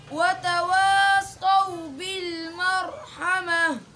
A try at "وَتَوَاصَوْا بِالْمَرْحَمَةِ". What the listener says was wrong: बिल में रुके हो आप क्यों? दोबारा